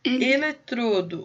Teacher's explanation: O som é fechado, tá? Eletrodo é uma paroxítona.